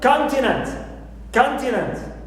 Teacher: I stick to the main Rule and I stress the first syllable